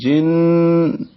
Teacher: جن جیم کے نیچے زیر ہے, جیم کو نون سے ملائیں گے. جن غنہ ہے, آواز ناک کے پاس سے یعنی خیشوم میں جائے گی.